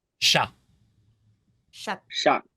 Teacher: C and H in English you kind of have a reflex of adding a t sound like to chat for example right T but in French remove that and treat it more like an sh instead